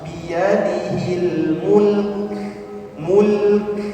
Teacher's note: kita wakaf di sini ada huruf kaf ya dia menjadi sukun kaf mempunyai sifat hafas ya jadi ada aliran nafas